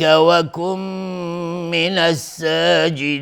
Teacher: نون ساکن بعدش میم ادغام با غنه